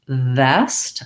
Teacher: saying waist waist i shouldn't feel any connection there versus vest i should feel my upper teeth and lower lip and that sound continues